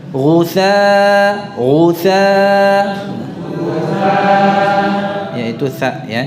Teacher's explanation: dari ujung lidahnya tempelkan ke ujung gigi seri atas, ujung ketemu ujung, keluarkan sedikit. Ghutha yaitu tha ya, jadi bukan sin.